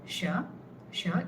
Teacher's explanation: This indicates mid palate. So this sha is pronounced from the tongue touching the mid palate, not touching, grazing the mid palate, which is the upper middle part of the palate, roof of your mouth. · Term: Murdhana Sha